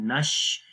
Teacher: آواز آئے گی، نون کو شین کے ساتھ ملائیں گے، نش، شین کی آواز منہ کے اندر پھیل جائے گی